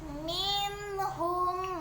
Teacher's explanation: nun sukun bertemu dengan huruf ha adalah idhal halqi karena dia huruf tenggorokan